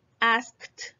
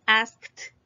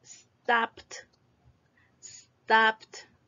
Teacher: Vean que la E, de hecho la voy a quitar aquí, la E no se pronuncia. En lugar de decir la D, viene un sonido, que es la T de tito.